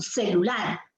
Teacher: Se nota allí la presencia del acento en la sílaba lar.